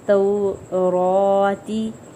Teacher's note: را کے اوپر کھڑی حرکت ہے تو اس کو ایک الف کے برابر کھینچیں گے اور پر پڑھیں گے